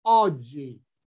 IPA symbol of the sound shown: ò